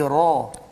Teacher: ra pun tebal juga walaupun dia bukan huruf isti'la